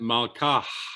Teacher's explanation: And note that I aspirated that final syllable.